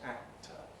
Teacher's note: approach phase for the velar the air is end locked but while the velar closure is held the tongue tip makes its movement and contacts the alveolar ridge you can't hear that because there's no air behind it it